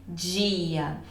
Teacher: é como se eu juntasse o som do D com o som de J e dissesse dia. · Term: africados